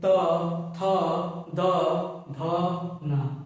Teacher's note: त वर्ण के जितने वर्ण है वो सभी दंत में आएंगे जब त वर्ण के उच्चारण करेंगे आप तो जीव जो है जाके वो दात के पिछले हिस्से से टच होगी